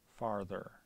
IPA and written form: faɹ.ðɹ (farther)